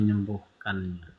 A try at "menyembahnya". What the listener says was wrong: Menyembah bukan menyembuhkan.